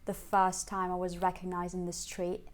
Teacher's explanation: you can notice that it's pretty flat and low